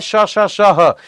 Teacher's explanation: संघर्षी जहां पर हवा घर्षण के साथ गर्म होकर निकलती है